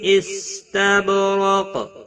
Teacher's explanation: تب، با ساکن پر قلقلہ ہوگا، را زبر کی وجہ سے پر پڑا جائے گا۔ قاف حروف مستعلیہ میں سے ہے، پر پڑا جائے گا، اور وقف کی صورت میں قاف ساکن پڑا جائے گا، اس پر قلقلہ بھی ہوگا۔ ملانے کی صورت میں ادغام با گنہ ہوگا۔